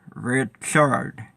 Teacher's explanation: I get the R sound in the beginning, but the second R sound is an ah. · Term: speech impediment